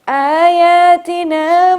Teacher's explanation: کیونکہ کھڑا زبر ہے تو امپورٹنٹ ہے، اہم ہے کہ ہم تھوڑا سا اسے پرولونگ کریں